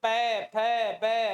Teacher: बिल्कुल पै फै बै ऐसे बोलते हैं तब होठों को गति करनी पड़ती है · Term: ओष्ठीय अक्षर